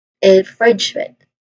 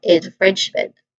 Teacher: Now the primary stress is on the second syllable, French. So you say it all as infringement.